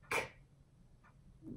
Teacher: It's an unvoiced stop sound, K.